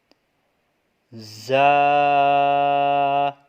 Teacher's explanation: سامنے کے اوپر اور نیچے کے دونوں دانتوں کے اندرونی کنارے سے جب زبان کی نوک لگے گی تو یہ زا ادا ہوگا ، ٹھیک ہے، زا، تو یہ سیٹی والے حروف ہے، سیٹی